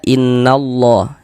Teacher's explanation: Jadi lafaz Allahnya itu ya kita baca tebal, kita baca tafkhim. Huruf lam yang di tengah nih, huruf lam jalalahnya itu kita baca tebal.